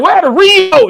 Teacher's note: She said I would have put the emphasis on moat. She put the emphasis on re.